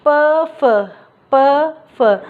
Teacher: फिर क्या है, प फ, जब हम इस वर्ग को बोलते हैं, प वाले वर्ग को बोलते हैं, तो उसमें क्या होता है, हमारे जो होठ है एक दूसरे को क्या करते हैं, स्पर्श करते, छूते हैं।